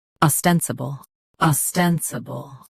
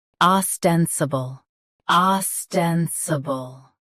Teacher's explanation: US, ah. UK, oh. Same rest.